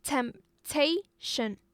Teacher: It's a 3-syllable noun. And the stress, the emphasizement was going on the second syllable.